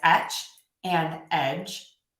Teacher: In etch, the vowel will be a little tiny bit shorter, and in edge, the vowel will be a tiny bit longer. So even if a native English speaker turns off their voice slightly for that J at the end, that vowel will still be slightly different.